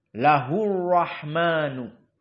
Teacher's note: di sini semuanya muraqaqah Kecuali lahu Rahman maka ro mufakhamah karena dia dalam keadaan fathah dan tasdid